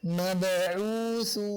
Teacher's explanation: mim dan ba sama-sama keluarnya di dua bibir, mim dan ba. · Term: izhar